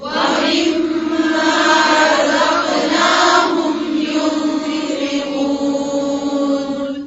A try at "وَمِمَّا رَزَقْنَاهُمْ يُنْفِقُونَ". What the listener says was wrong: اسی طرح سے یو یہاں پہ بھی ينفقون. یوں کی ساؤنڈ نہیں آنی چاہیے.